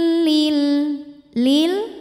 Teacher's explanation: alif lam menghadapi huruf qamariah yaitu mim cara bacanya lam dibaca jelas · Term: alif lam qamariah